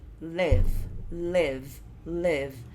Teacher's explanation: vai ser com aquele som de I, que não é I, tá mais pro E do que pro I